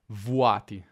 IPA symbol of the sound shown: vu